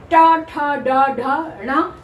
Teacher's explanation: ट वर्ग के 5 वर्ण मूर्धा यानी दांतों के पीछे ऊपर का भाग, तालु से थोड़ा आगे दांतों के पीछे का ऊपर का भाग जीभ उसको टच करती है, तब ट ठ ड ढ ण ये बोला जाता है।